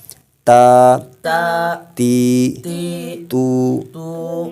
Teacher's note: تا کا جو مخرج ہے زبان کی نوک اور اوپر کے دانتوں کی جڑ سے ادا کرنا ہے